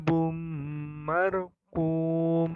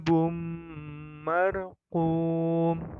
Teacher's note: tanwin bertemu dengan huruf mim maka termasuk hukum bacaan Idgham Bighunnah maka cara membacanya dengan mendengung